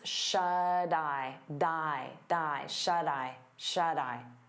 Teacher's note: we turn that T into a soft D because it's between vowels, and you'll hear it on both words.